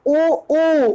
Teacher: तो पश्च भाग आपका है, पश्च भाग आपका है ओ, जिसको बोलने के लिए हमारे पश्च भाग की जरूरत पड़े, ओठ को मोशन करना पड़े, ठीक है। ओठ में कुछ न कुछ परिवर्तन करना पड़ रहा है, ओ ओठ को वृत्तामुखी करना पड़ रहा है